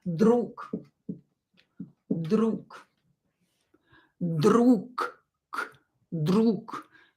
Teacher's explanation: You can hear that I don't pronounce g here. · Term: unvoiced consonant